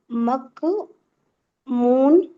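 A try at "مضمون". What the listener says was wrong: ज्वाद आएगा ना, है, ज्वाद का नुक्ता है ऊपर, तो मू, और नून नहीं, मजमू।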